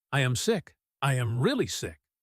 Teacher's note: The repetition of sick, with the emphasis on really, tells Marcus that this is not a small cold.